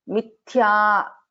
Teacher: So here Mithya Tha is a Mahaprana.